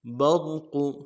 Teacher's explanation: لفظ برق میں جو را کو موٹا کریں گے، برق، قاف کو موٹا کریں گے، برق، قاف کو کھینچا نہیں ہے، برقو نہیں پڑھنا ہے، برق، ہونوں گول کریں گے، پیش کو ادا کرتے ہوئے، زبر زیر پیش کو بالکل نہیں کھینچیں گے۔